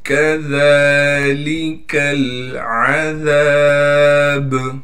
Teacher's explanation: کاف کو باریک کر کے پڑھنا ہے، ذال کو نرم کر کے پڑھیں گے، پھر ذال پر کڑا زبر ہونے کی وجہ سے ذال کو ایک الف کی مقدار کھینچیں گے، لام کو بغیر کھینچے پڑھنا ہے.